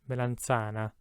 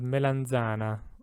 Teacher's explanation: if you were from the north of italy you would probably pronounce this word melanchana and if you're from the south you'd probably say melanzana